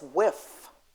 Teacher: the final sound in with is TH, and the child who speaks a dialect pronounces it in oral language as whiff, that's not wrong.